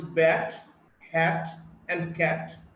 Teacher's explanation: the voiceless T, is a voiceless alveolar plosive